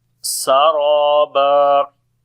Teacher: Sin we read in light sound, ra we read in heavy sound, similarly alif and we long as well.